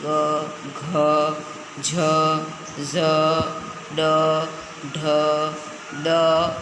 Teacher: નાદતંત્રીઓ સહેજ વધુ કંપનની અવસ્થામાં હોય ત્યારે તે ધ્વનિ ઉત્પન્ન થાય તે ઘોષ ધ્વનિ છે